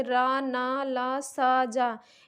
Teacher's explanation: आठवां है वत्स या मसूड़ा, यानी जिनका उच्चारण हम मसूड़े को टच करके करते हैं, जैसे रा ना ला सा जा, इनको उच्चारण करते समय हमारी जीभ मसूड़े से टच करती है।